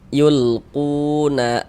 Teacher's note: ku dibaca panjang, mad tabi'i panjangnya 2 harokat sesuai rumus 2 warna hitam.